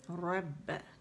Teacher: با باریک ہے، اس پہ جماؤ دینا ہے، رب. ٹھیک ہے، اور آواز اوپر کی طرف جائے گی، رب.